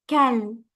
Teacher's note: Do not say kal. Do not stretch the kaf here. There is no elongation there.